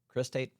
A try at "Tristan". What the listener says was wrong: Tristan. Tristan. Tristan with a T.